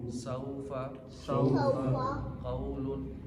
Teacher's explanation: अब सौफ़ा और क़ौलुन में वो लीन है, क्योंकि वो साकिन से पहले ज़बर है, और वो से पहले ज़बर हो या से पहले ज़बर हो तो ये लीन होते हैं और इनको नरमी से अदा करते हैं।